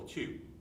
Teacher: whisper the syllable too you'll feel a puff of air